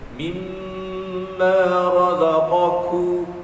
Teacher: Bila sebut kaf pastikan ada angin. Qaf jangan ada angin.